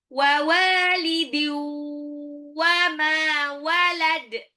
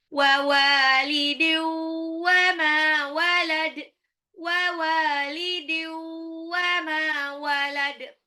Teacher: Wa walidin, wawunya 2 harokat mad tabi'i, wa walidiu, tanwin ketemu waw, dilebur, tanwinnya jadi waw, tapi ditahan. Ini idgham bi gunnah.